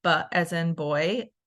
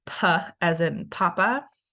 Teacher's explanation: the difference is your vocal folds vibrate on the B and it does not vibrate on the P